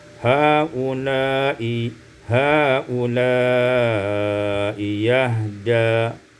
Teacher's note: ditukar hamzah yang kedua dengan ya yang berbaris fathah